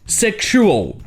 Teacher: dans le mot sexual, le X se prononce ksh